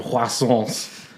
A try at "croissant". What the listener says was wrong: The T is silent.